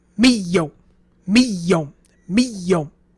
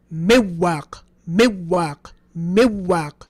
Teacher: the waw and ya are actually pronounced without ghunnah. They are true idgham. So the way he pronounces it in that qira'ah is miyom, miyom, miyom, with absolutely no ghunnah.